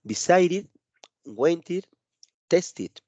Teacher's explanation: el ed, pues no se pronuncia como tal, sino que se pronuncia id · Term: pronunciación id